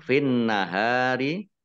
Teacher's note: Nun tasdid, ya, dibaca runah atau mendengung, ditahan 2 harokat.